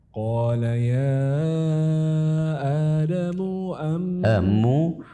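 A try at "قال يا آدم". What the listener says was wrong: tidak boleh ada idkhal, memasukkan mad. Adamu, enggak boleh. Adamu muam, ya gitu ya.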